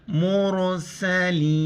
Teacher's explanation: را ساکن ہے کیونکہ میم پیش ہے، را کو موٹا کر کے پڑھیں گے